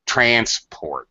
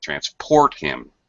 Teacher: we had to take a bus as transport transport all right as a noun you stress the first syllable